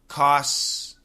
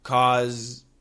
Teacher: And the difference is vibration. The S has no vibration. The Z has lots of vibration.